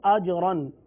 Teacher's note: را پر 2 زبر کی تنوین ہے لہذا را کو پر پڑھیں گے.